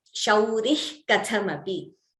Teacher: Visarga followed by Ka or Kha gives you a Jihva Muliyah